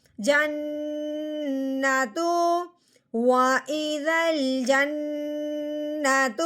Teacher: اگر نون کے اوپر 3 دندوں والی شد لگی ہوئی ہے، جیم کو نون مشدد کے ساتھ ملائیں گے اور ساتھ ساتھ ایک الف کے برابر لمبا غنہ بھی کریں گے